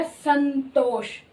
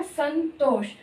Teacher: अनुस्वार में न की साउंड आ रही है, क्योंकि ये त वर्ग का है